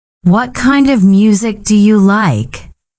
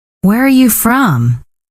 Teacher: goes down at the end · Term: Falling tone